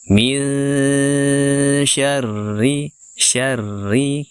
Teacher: Kemudian setelahnya ada huruf ro yang bertasydid, ro-nya berharokat kasroh, kita tipiskan ya, sejak dia ditekan karena bertasydid sampai dia dibunyikan harokatnya ri, itu kita tipiskan.